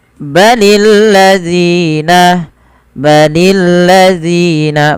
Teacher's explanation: panjangkan Z sepanjang dua harakat · pada lafal zi panjangkan zi sepanjang 2 harakat karena dia ada mad tabi'i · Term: Mad thi'i